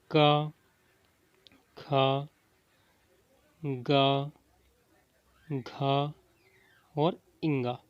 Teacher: जैसे क ख ग घ इंग अगर हमें उच्चारण करना है तो हमें कंठ का सहारा लगेगा। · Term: कंठय